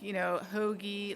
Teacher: You draw out your O's